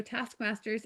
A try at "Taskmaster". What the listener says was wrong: You're saying it with you're pluralizing it.